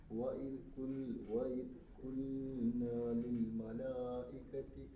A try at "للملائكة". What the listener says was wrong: കുറച്ചും കൂടെ നീട്ടെ അവിടെ